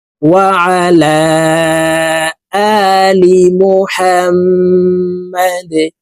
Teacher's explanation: ডাল কলকলার হরফ নিচের দিকে ধাবিত করে ধাক্কা দিয়ে উচ্চারণ করে সাকিন করে ফেলবো